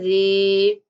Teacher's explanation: حمزہ زین نون ان نون زبر لام نل لام زبر لا ان اللہ زال زیر یا زی، یہاں پہ جائے مدہ ہے اس لیے زال کو تھوڑا سا لمبا کریں گے